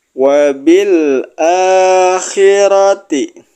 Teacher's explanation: Wabil a-nya dibaca panjang 2 harokat.